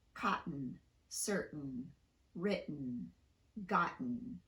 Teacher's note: These are words with a T vowel N configuration in the unstressed syllable. For these, we use a glottal stop in place of the T